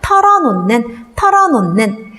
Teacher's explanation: 히읗 받침은 뒤에 뭐가 올 경우에 니은이 올 경우에는 뭘로 발음이 된다? 니은으로 발음이 된다.